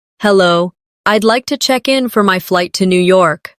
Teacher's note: Notice how check in sounds like one smooth unit. No pause in the middle.